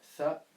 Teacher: Donc c'est le th. Donc c'est le tha, donc c'est la langue entre les dents